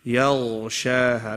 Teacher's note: Ya is a light letter and ghain is a heavy letter. Okay? So you have to do that transition.